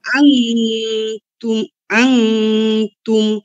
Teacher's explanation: নুন সাকিনের পরে তা আসছে আন ইগফা গুন্না হবে